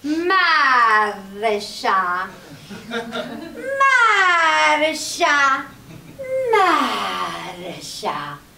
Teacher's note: She liked rolling her R's like hippies like rolling their joints.